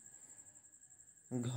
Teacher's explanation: घा का उच्चारण स्थान कंठ है